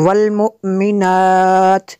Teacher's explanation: حمزہ ساکنہ کو حمزہ جھٹکا دیں گے۔